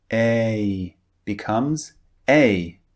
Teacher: you can hear the difference in the length this is because a is actually two vowels pushed together to make one sound a becomes a so it's a longer vowel sound than a